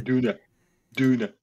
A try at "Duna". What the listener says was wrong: You always say donor.